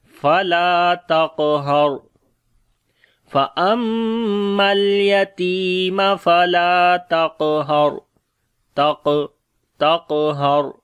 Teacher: قاف کو موٹا پڑھیں گے، اس کے اوپر قلقلہ بھی کریں گے جو کہ کمزور قلقلہ ہوگا، اور یہاں پر را کو موٹا پڑھیں گے، را کے اوپر جزم ہے اور اس سے پہلے زبر ہے، اس وجہ سے فلا تقہر۔